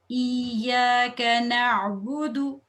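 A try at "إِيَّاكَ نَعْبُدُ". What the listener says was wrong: काफ को मोटा नहीं करना, काफ तो लाइट है. इय्याक नअबुदु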